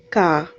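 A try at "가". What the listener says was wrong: So when you say like guide in English, it sounds just like that. G and A, ka, like guide in English. Some people read this G sound as K, like ka, but that's just wrong. That's G-A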